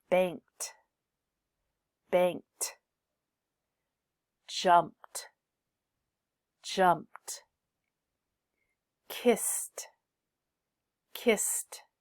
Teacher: you use the T sound after unvoiced final sounds like in f K P s